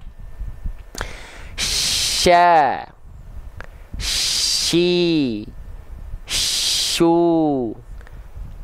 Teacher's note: tafasyi itu artinya menyebar udara dari dalam murut makanya di sini huruf syin Tengah lidahnya enggak betul-betul nempel